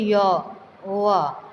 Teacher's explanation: तो इसमें वायु बिल्कुल नहीं रुकती, आसानी से हम य, व बोल सकते हैं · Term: अर्धस्वर व्यंजन